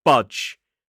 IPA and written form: bʌdʒ (budge)